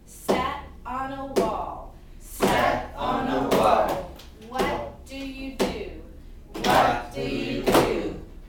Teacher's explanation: Okay, now let's look at a group of sentences that follow the pattern sat on a wall. So a strong beat, 2 weak beats, and a strong beat